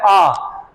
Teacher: जैसे विवर्त होता है ओपन, यानी कि पूरा मुंह खोल के बोलना पड़ता है। जितना मुंह बड़ा होगा उतना ही आ बहुत अच्छा निकलेगा।